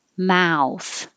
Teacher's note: And you end with an oo. So this is a big movement going from low, and back, ow, to high and forward.